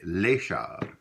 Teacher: Although most nouns in French, if you write them out, will end with an S at the end of the word. Typically, the S is not pronounced unless it's kind of made like what we call in liaison. · It's kind of elided to the next word if it has a vowel sound following it. But most of the time, you don't hear the S.